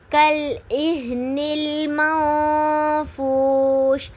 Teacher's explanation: تکون الجبال پہ جبا پہ الف مدہ ہو رہا ہے، کالعہن المنفوش، منفوش پہ نون ساکن کے بعد حروف اخفا میں سے فا آ رہا ہے، تو آواز کو تھوڑی دیر کے لیے ناک میں چھپانا ہے، اخفا کرنا ہے۔